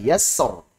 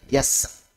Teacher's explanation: Kalau baca tebal berarti yassor, kalau baca tipis berarti yassar.